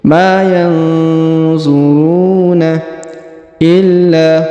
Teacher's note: Ma yanzuruna illa, huruf la ditahan dan ditekan lalu dipanjangkan 2 harokat. Yang pertama karena terdapat tanda tasdid, lalu di sini di depannya terdapat alif ya.